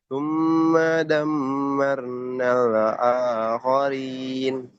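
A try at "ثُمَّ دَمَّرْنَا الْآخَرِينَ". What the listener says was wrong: lamnya jangan mantul nal aja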